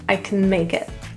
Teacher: In the word can, it's really reduced to CN,